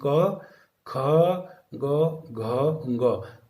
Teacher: हमारे मुख से आवाज आती हुई घर्षण के साथ में क, ख, घ, ग इत्यादि इत्यादि बाहर निकल जाती है, तो ये कंठ्य ध्वनियाँ कहलाती हैं